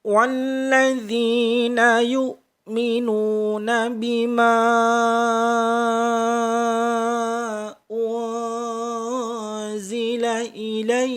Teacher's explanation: Kemudian pada bima dipanjangkan 5 ketukan. Namanya majaiz munfasil.